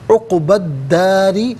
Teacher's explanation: را کے نیچے زیر، را کو باریک کر کے پڑھیں گے۔